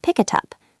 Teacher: The K in pick moves to the I in it. and the t and it moves to the u and up.